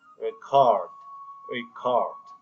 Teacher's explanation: when we use the word record as a verb the stress is on the second syllable